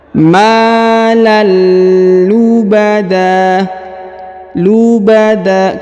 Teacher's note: tanwin an bertemu dengan lam bertasdid, maka dia dileburkan dan disamarkan pada huruf lam bertasdid ini ya, ditahan dan ditekan.